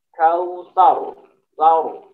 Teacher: Ketika ini diwakafkan maka menjadi sukun atau mati. Ra sukun dalam hal ini dibaca tebal. Ra sukun yang sebelumnya adalah berharokat fathah ya. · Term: tebal atau tafkhim